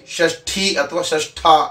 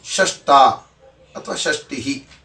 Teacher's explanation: ಪದ ಪ್ರಯೋಗ ತಪ್ಪು ಯಾಕೆ ಅಂದ್ರೆ ಷಷ್ಠ ಅಂದ್ರೆ ಆರನೆಯದ್ದು ಅಂತ ಅರ್ಥ ಹಾಗಾದರೆ ಸಾಧು ಪ್ರಯೋಗ ಯಾವುದು ಅಂದ್ರೆ ಅಲ್ಪಪ್ರಾಣ ಶಕಾರಕ್ಕೆ ಟಕಾರವನ್ನ ಹೇಳಿ